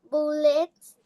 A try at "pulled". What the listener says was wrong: Pa, pa. Letter P, not B. Pa, pa.